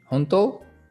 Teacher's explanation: So if you have rising intonation, honto, like really?